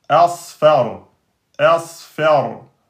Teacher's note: Ici, asfar, asfar. Hein, ra soukoun précédé de fetha, emphatique